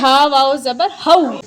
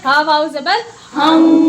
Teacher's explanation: تنوین کے بعد جب واو آئے گا تو یہاں بھی ناک میں آواز جائے گی، جس کو ادغام مع الغنہ کہتے ہیں